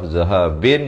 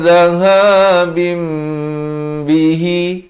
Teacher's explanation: Pastikan di sini kita bacakan instead of zahabin jadi zahabim. Ditukarkan bunyi nun kepada bunyi mim dengan kadar 2 harakat. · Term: hukum iqlab